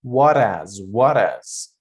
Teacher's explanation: You connect the last letter to the first letter after H, and you don't pronounce the H sound